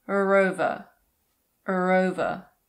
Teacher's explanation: If the following word starts with a vowel sound, we normally pronounce the R, so it becomes er.